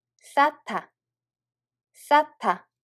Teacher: There is a hieut bachem followed by [ㄷ] so it becomes [ㅌ]